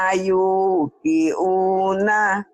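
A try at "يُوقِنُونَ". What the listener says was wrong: Bukan yukiu. Kenapa yukiu? Yukinu. Bi ayatina yuqinuna.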